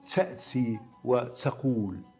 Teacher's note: حرف التاء، هناك من ينطقه مع دفقة هواء تحمل معها صوت السين، كما نسمع في بعض مناطق المغرب